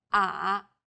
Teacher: The third tone goes down from a low pitch, then rises to the middle of the pitch range.